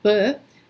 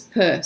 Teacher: they're just the same sound but with voiced versus unvoiced